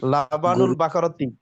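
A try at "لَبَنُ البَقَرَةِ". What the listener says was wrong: গরুর রা আসছে না, রো আসছে। গাভীর দুধ, রো আসছে।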